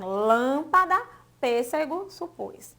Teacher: No caso específico do português, aparece sobre as vogais A, E, O, quando são tônicas na última e antepenúltima sílaba. A palavra aí tem lâmpada, pêssego, supôs. E tem um timbre mais fechado.